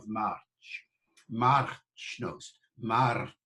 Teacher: You can trill it if you like, March. The R was pronounced. All R's are pronounced after the vowel, right up to Shakespeare's time and beyond.